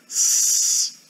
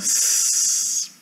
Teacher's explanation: Então você precisa pegar a pessoa e falar, olha, o fonema Z se distingue do fonema S, tem que falar de uma maneira mais fácil, né, de que é pela vibração das cordas vocais aqui dentro. Faz o chiado do s, né, o sibilar, s, e coloca o dedo na garganta, você vê que a garganta não tem vibração nenhuma.